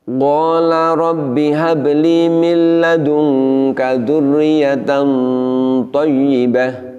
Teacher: Ketika nun sukun bertemu dengan dal dan ta, kita bisa merasakan di situ bahwa bunyi nunnya, samarnya dan dengungnya itu benar-benar sangat terasa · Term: ikhfa hakiki